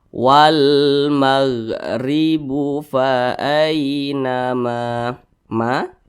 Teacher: huruf waw di sini tidak dibaca panjang karena di depannya ada huruf yang dibaca sukun